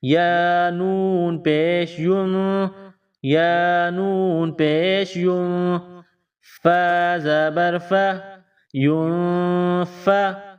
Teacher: نون ساکن ہے، نون ساکن کے بعد فا ہے تو نون پر اخفا کریں گے